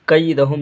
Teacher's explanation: یہاں پہ یا لین ہے، نرمی سے جلد ادا کریں گے